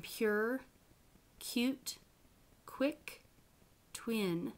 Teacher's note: the w becomes very rounded you can watch your lips and glides can be devoiced after voiceless stops · You noticed your voice doesn't turn on until the vowel happens.